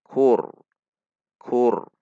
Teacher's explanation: Ku dengan istifal. Ra sukun sebelumnya dhammah, maka ra dibaca tebal.